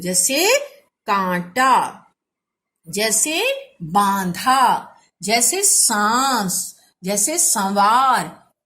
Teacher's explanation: इनके उच्चारण में आवाज मुंह एवं नाक दोनों से आ रही है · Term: अनुनासिक